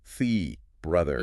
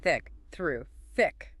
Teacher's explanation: Two different the sounds in English. Voiced brother and voiceless thick.